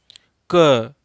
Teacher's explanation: शुरू तो हम क से कर रहे हैं लेकिन खत्म अ से हो रहा है। तो इससे पता चलता है कि व्यंजन वर्णों के उच्चारण में स्वर की सहायता लेनी पड़ती है।